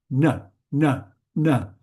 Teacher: This is the retroflex. It's on the hard palatal, a bit more in front of your throat. You bring the tongue back.